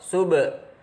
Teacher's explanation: qalqalah sughra, ada ba mati di tengah kalimat, cara membacanya memantul